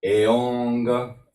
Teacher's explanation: Because this is n dot up, which is totally opposite. This is guttural or velar sound, nasalized.